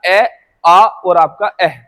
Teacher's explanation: अगर इनके उच्चारण स्थान की बात करें तो इनका उच्चारण स्थान जो होता है ना बेटा वो होता है आपका कंठ से